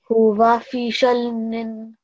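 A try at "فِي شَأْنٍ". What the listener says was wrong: Not lam. And if you're pausing there, so noon will take a sukoon, how do you think you'll read it? Yeah, so just merge the sound a little bit. Huwa fi shatn. Yeah, you should slightly hear that noon.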